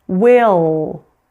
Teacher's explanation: we need to raise the back of the tongue in addition to the front in order to correctly pronounce this dark L. Another thing we need to do is we need to hold that dark L longer.